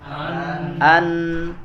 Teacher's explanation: Kalau nun dia bedanya dia keluar suaranya dari hidung ya, dari pangkal hidung ya